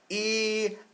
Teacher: say E, a long E sound, E, and then take your lips and turn them into oo.